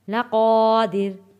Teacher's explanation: قا حروف مدہ ہے، الف سے پہلے زبر ہے، اس لیے ہم نے اس کو ایک الف کے برابر کھینچ کر پڑھا ہے۔ لقادر، یوم، واو ساکن سے پہلے زبر ہے، حروف لین ہے، تو ہم نے اس کو جلدی اور نرمی کے ساتھ پڑھنا ہے۔